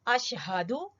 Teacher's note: ہا اقصا حلق سے حلق کے آخری سے